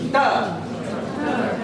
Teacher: язык в этом звуке не касается зубов, этот звук касается точки, которая чуть-чуть дальше, во время того, как мы произносили ч.